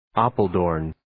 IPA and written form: 'ɑːpəl,doʊrn (Apeldoorn)